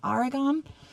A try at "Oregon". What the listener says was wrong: Oregon. Oregon. Because when you say Aragon, it sounds like something out of Lord of the Rings. In Aragon.